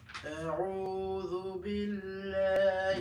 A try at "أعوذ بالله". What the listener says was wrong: Billah. Why aren't you saying Billah? Why didn't you say Billah? Before the word Allah? Yes, kasra.